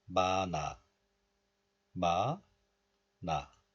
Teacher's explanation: in this case, 히읗 is just dropped. And still liaison or linking occurs. So in this case, 니은 moves to the next letter, and this is pronounced as 마나, 마나.